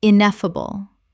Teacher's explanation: Four syllables with the stress on the second